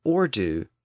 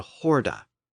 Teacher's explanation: it picked up a slight H sound at the front, from ordu to horda, and from there it made its way into English as horde in the 1500s.